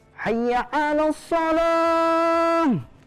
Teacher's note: Kalau ya bertasdid tidak ada hukum bacaan dengung.